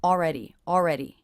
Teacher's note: I'm not really pronouncing the L here this syllable is coming out more like the aw as in law vowel